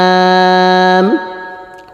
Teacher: জিহ্বার গোড়ার একটু আগের তালুতে লাগবে স্বাভাবিক উচ্চারণ হবে